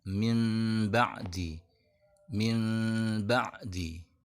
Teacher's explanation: dalam hukum iqlab bunyi n tidak dibaca jelas tapi tidak juga melebur huruf ba dia dirubah dulu menjadi huruf mim · dia tidak langsung samar dari n tapi ada perubahan dulu dari n menuju m barulah bunyi m nya disamarkan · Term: iklab